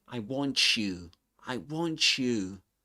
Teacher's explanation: he doesn't drop the final T in the word want, but he combines it with the next sound, in this case, which is you. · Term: coalescent assimilation